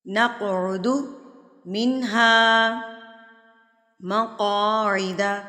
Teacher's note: نقعد، نق پہ آپ نے کیا کرنا ہے، اس کو قلقلہ کر کے پڑھنا ہے، ہلا کے، لفظ کو تھرتھراہٹ سے مار کے پڑھنا ہے